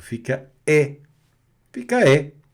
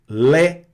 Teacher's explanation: com o som mais aberto, com o som da vogal e mais aberto